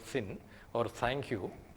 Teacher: that is a fricative sound, that is not a plosive sound, because there is no plosion there. But the Indian speakers usually use a plosive dental sound in place of the British fricative dental sound, because we are not familiar with the original pronunciation of that particular sound.